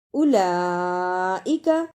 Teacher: ان الذین، اولئک، لام پر بڑی مد ہے اور کھڑی زبر ہے، اس لیے اس پر دیر لگانی ہے۔ بڑی مد کو ادا کرنے کا طریقہ، 4 بند انگلیاں باری باری کھولیں، اتنا لمبا کرنا ہے۔